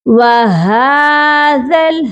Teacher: ہا کے اوپر حرکت کھڑی ہے، تو اسی لیے ہم نے اس کو کھڑا کر کے پڑھنا ہے، یعنی کہ تھوڑا اسٹریچ کر کے پڑھنا ہے، لمبا پڑھنا ہے